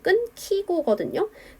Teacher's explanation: 끊기고가 표준 발음이 되는 과정은 거센 소리 되기를 통해서 표준 발음이 되었습니다